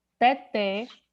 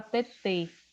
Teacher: Então, o acento agudo, o timbre da palavra, ao ser pronunciado, é aberto. O circunflexo, ele é fechado. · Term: som aberto